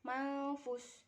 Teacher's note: hukum bacaan ikhfa yang dibaca samar karena ada nun mati menghadap dengan huruf ikhfa yaitu fa